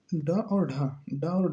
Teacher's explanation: दोनों जो है सघोष वर्ण होते हैं और दोनों ही मूर्धन्य वर्ण होते हैं